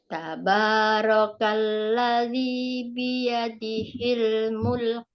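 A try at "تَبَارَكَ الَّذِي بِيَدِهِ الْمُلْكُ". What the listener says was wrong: Oke, masih hampir-hampir mulek. Mulek.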